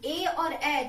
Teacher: कंठ और तालु के सहयोग से ही हम ए और ए का उच्चारण करते हैं। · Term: कंठ तालु